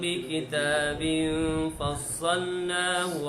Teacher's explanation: tanwin bertemu dengan fa adalah ikhfa hakiki, pun bacaan dengung sekadar 2 harakat